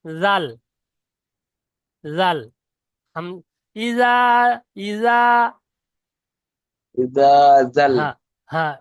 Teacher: এই জালটা উচ্চারণ হবে শুধু জীবের আগা আর উপরে দাঁতের আগা